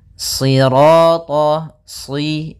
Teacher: karena shad itu pangkal lidah kita terangkat dan melekat karena dia huruf idbaq